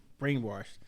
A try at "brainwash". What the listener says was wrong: I don't know why you're saying the R. Why you put the R? You're pronouncing R.